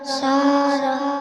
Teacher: ساربہ الف سے پہلے زبر ہے اس لیے الف مدہ ہوگا الف مدہ کو ایک الف کے برابر کھینچ کے پڑھیں گے